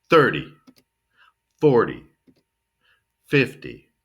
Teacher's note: See, we're going to pronounce it like D. It's T Y, but pronounce it like D. · Stress the first syllable and then finish kind of weak.